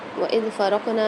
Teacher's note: قاف کے اوپر قلقلہ ہوگا، را کو کاف کے ساتھ ملا کے پڑھنا ہے، نون کے ساتھ الف مد آ رہی ہے تو یہاں پر ایک الف مدار کھینچ کے پڑھیں گے۔